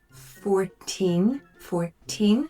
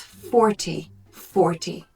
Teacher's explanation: the stress is on the second syllable whereas 40 40 the stress is on the first syllable